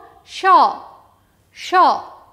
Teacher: জিভে আর তালু মিলে তালব্য স হয়